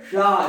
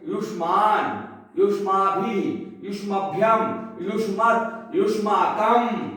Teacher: जब जीभ मूर्धा को स्पर्श करके बोलती है तो मूर्धा सा होता है। तो यहाँ पर जितने यहाँ शब्द रूप हैं, शब्द रूप में जितने सा आए हुए हैं, ये सारे सा क्या है?